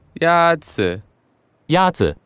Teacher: The first tone is a high-level tone.